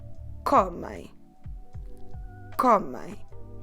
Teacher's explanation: I'm not stressing the ending I'm stressing the second to last syllable